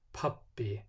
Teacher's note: it has that little uh aspiration the little puff of air after the sound